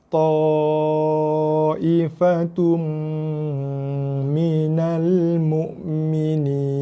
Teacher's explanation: Sini kita ada dengung, pada 2 jumpa mim.